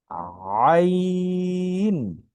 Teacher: আমি যদি একটু বুঝাতে চাই, সেটা হচ্ছে আমরা যখন অনেক সময় রাগ হয়ে যায়, বকা দিই, গলা একটা চাপ দিই, এই, এই, একটা গলা একটা চাপ দিই, ঠিক এই আইনটা উচ্চারণ করার ক্ষেত্রে গলায় একটা চাপ আসবে। আইন, আইন, আগে গলায় চাপ হবে, তারপর হরফটি উচ্চারণ হবে আইন।